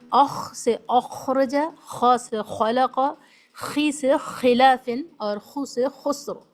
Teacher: यह soft palate है ऊपर का जो सॉफ्ट तालू है हलक के बिल्कुल करीब यहां से अदा होता है